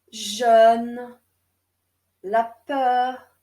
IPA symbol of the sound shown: œ